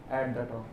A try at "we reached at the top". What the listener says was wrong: See how beautifully he's doing, right? Very good.